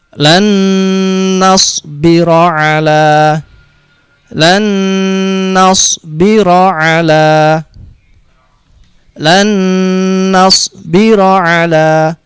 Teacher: Jadi nun disukun yang pertama ini seperti tidak ada, langsung masuk ke huruf nun yang kedua ini dan ditasdidkan sambil didengungkan. Jadi idgham bi gunnah masuk dengan didengungkan.